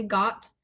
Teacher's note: i'm going to really try to make the t pronounce so that o sounds really short closed off